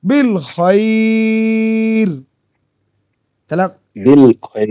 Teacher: সাকিন হয়ে যায়, তাহলে এই যে বিল খয়রি বলছি না আমরা, তা খয়রির জায়গায় থামার সময় বিল খয়র হয়ে যাচ্ছে, থামার সময় শেষে জাওয়াজের পেশ পড়তে হয় না। তাহলে লিখিত আকারে খয়রি থাকলেও খয়র এরকম পড়ছি আমরা, তাহলে এটা মাদ্দে লিন হয়ে যাবে, তখন এটা টানতে হবে। · 3 আলিফ টানতে হবে। 3 আলিফ মানে 6 সেকেন্ডের বরাবর টানতে হবে।